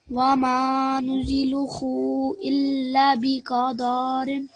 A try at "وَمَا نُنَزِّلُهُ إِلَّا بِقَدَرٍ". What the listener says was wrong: So ننزل and then ننزله. وما ننزله إلا بقدر. So I think either the qaf or the dal was too long.